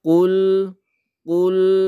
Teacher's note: lam ini tidak ditekan tidak pula terlalu dilepas Tapi dia itu sifatnya tawasuth